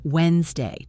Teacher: Make your voice go down at the end, Wednesday.